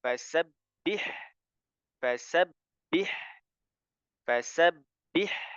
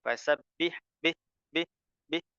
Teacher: ada huruf ha sukun maka jelaskan hanya ya alirkan suaranya fasabbih fasabbih fasabbih ya tidak boleh fasabbih Bih Bih Bih berhenti